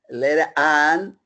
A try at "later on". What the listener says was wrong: R is not linking. Now the R needs to link.